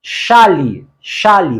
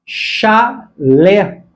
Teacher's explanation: Não confunda chale, paroxítona, chale, com chalé, a palavra oxítona e acentuada.